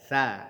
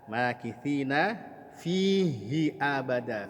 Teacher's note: ujung lidah kita keluar sedikit dari batas gigi